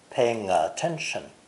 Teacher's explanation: the words paying and attention are linked together with the ng sound